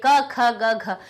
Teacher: वायु हमारे अंदर से निकली और वो कंठ में टकराई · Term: का वर्ग